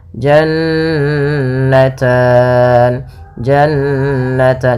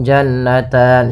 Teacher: Bacaan ghunah yaitu suara nunnya ditahan dua harakat.